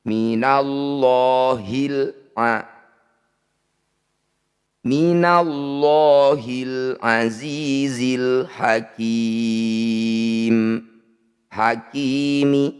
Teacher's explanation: bacaan izhar qamariah lam sukunnya dibaca jelas semuanya